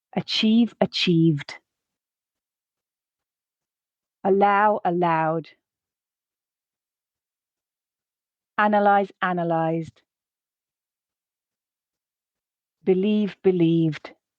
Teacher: at the beginning of that D sound, at the end of those words, that it is voiced